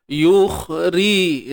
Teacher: Ri nipis. Sebab ra baris bawah. · Terangkatnya pangkal lidah bagi mengeluarkan suara tebal tu. Jadi bila kata tebal ni sebenarnya prosesnya ialah terangkat pangkal lidah. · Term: sifat isti'la